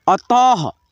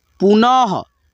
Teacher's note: अ, त के आगे दो विसर्ग ऐसे लगा है तो विसर्ग को हम लोग ह पढ़ते हैं। ठीक है, विसर्ग को ह के रूप में उच्चारण करेंगे